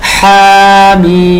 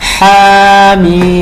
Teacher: হাটা হল মোটা কেমন এক আলিফ টান আর মিমটা তো চার আলিফ টান